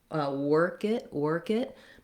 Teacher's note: my K is linking to my it.